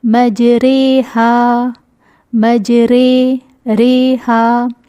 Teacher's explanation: اس میں آواز جو ہے آ اور ای کے درمیان کی ہوگی، فتح اور کسرہ کے درمیان، ناٹ ایگزیکٹلی درمیان لیکن جھکی ہوئی، کچھ اس طرح۔ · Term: امالہ